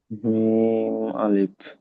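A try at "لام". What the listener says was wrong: আরো লামটি টান দিয়ে বলেন। লাম।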